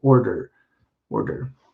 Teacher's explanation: light d my tongue actually goes a little bit behind my teeth when i pronounce that